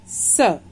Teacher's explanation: स का उच्चारण स्थान दंत और उच्चारण नाम दंत्य